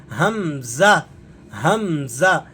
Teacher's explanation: हमजा हमजा यह हरफ भी हुरूफ-ए हलकी में से है। लेकिन यह हलक के उस हिस्से से अदा होता है जो मुंह के साथ मिला हुआ है। इसलिए इसकी आपको ज्यादातर आवाज मुंह से निकलती हुई महसूस होगी।